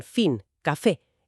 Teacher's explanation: La F, que es labio dental. El labio de abajo se acerca a los dientes de arriba, como en fin, café. Es sorda, sin vibración.